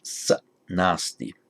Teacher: where sa appears before a word beginning with a consonant, this visarga just drops